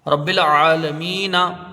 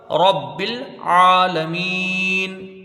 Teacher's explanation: वक्फ करेंगे तो ये नून के ऊपर जो ज़बर है वो साकिन हो जाएगा